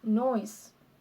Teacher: We go from the mid-back vowel sound O to the high-front vowel sound E to produce the diphthong OI.